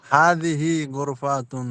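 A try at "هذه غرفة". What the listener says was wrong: গোর ফা লম্বা করেন কেন?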